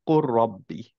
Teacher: নাও কোর রব্বি initially ছিল হচ্ছে কুল, এন্ড দেন রব্বি, লামার র সেম জায়গা থেকে, এর জন্য হচ্ছে দুইটা মার্জ হয়ে কোর রব্বি হয়ে গেল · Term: ইদগাম